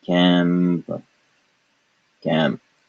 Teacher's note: right when you say the M in camp, you will feel your nose vibrate. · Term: nasal consonant